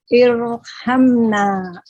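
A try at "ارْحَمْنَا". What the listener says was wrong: Nah, sekarang jadi tipis Bu. Ketebalkan lagi ro-nya. Jeda di huruf ro-nya, jadi nanti dilatih, ro-nya ditahan, langsung alirkan ke huruf setelahnya. Irha, irham, irji'i.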